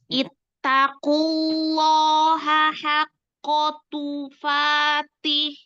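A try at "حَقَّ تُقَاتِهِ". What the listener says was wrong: Oke, itu bukan tufatih, bukan.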